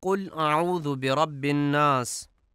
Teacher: قل کو کل پڑھا جاتا ہے، یعنی 2 نقطے والے قاف کو کل پڑھا جاتا ہے، جو کہ درست نہیں ہے